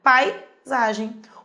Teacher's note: O A é mais forte que o I, então ditongo decrescente